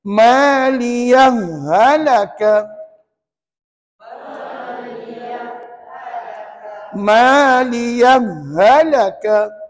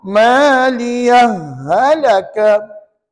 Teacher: memasukkan ha dhamir pertama ke dalam ha dhamir kedua dan dibaca tanpa saktah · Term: mengidghamkan